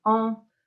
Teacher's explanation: we say O, and then when we put next to our nose, we say on